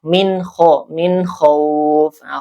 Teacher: Ee ini ada izhar karena ada nun sukun ee bertemu dengan huruf izhar, izharul halqi ya. yaitu ko dibaca jelas ya nunnya